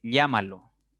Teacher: la mayor fuerza está cayendo en la tercera sílaba contando de derecha a izquierda y es una estructura por lo tanto va a llevar tilde